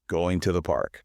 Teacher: The word to just becomes tuh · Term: weak form